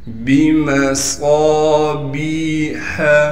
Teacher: صاد کو موٹا کر کے پڑھنا ہے اور صاد میں سیٹی بھی ادا کرنی ہے۔